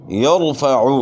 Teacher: یرفع را ساکن سے پہلے زبر ہے، را کو اپنے موٹا پڑھنا ہے۔ جب بھی را ساکن سے پہلے زبر یا پیش ہو، را کو اپنے موٹا ادا کرنا ہے۔